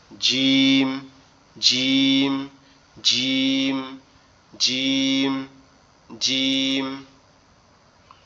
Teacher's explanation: জিহ্বার মাঝের অংশটা উপরের তালুর সঙ্গে লাগবে, উপরের অংশটা উপরের তালুর সঙ্গে লাগবে, লেগে উচ্চারিত হবে জিম, জিম, জিম, জিম, জিম। এরকম শক্ত একটা ভারী ভারী আওয়াজ হবে, হয়ে উচ্চারিত হবে কিরকম?